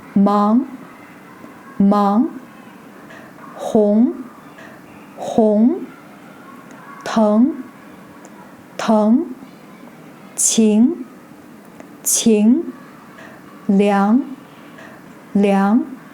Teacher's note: The second tone is a mid-rising tone, starting from lower pitch and going up rather sharply. It sounds just like interrogative sentences in English, where you raise your intonation at the end.